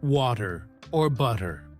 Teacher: the flap T sound, where the T sounds like a soft D